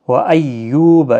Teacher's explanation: یو واو مدہ ہے، 1 الف کی مقدار کے برابر کھینچیں